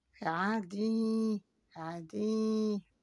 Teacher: Vous voyez ici que j'ai la voyelle I long.